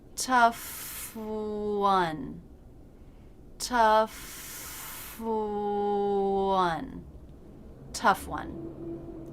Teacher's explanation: my bottom lip was touching the bottom of the top front teeth and then the lips round out my tongue doesn't have to move